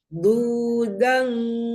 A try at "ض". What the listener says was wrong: Maksudnya yang bu-nya nggak apa-apa, tapi ini bukan dan dong. Ini bukan dan dong. Kenapa jadi dibaca dan?